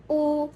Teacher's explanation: Vokal belakang tinggi, bulat, dan tutup.